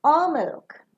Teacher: the last alternative that you are providing will fall down